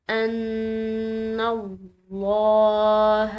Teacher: نون مشدد ہے، مشدد نون پر غنہ کیا جاتا ہے